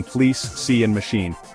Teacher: First I is a close front unrounded vowel heard in fleece, C and machine. Your tongue is high and forward lips spread.